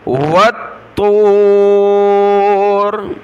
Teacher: والطور، واو تا زبر والطا، واو پیش تو، والطور را زیر ری، والطوری جب رکیں گے تو والطور، طا کو موٹا پڑھنا ہے، تشدید کی وجہ سے سخت کرنا ہے